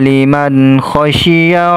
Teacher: nun sukun ketemu huruf k dibaca jelas dibaca izhar jelas